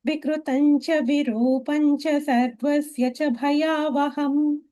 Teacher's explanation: In Virupa, that Ru is a Dirgha. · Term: Ru Dirgha